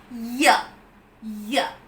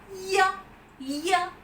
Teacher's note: The front of the tongue is raised rather high in the direction of the hard palate. Ya. So the front part of the tongue moves towards the hard palate if you pronounce it perfectly.